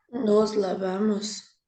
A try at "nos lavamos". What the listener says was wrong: muy bien.